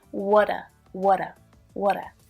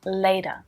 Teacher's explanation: can you hear that flap t there it sounds more like a d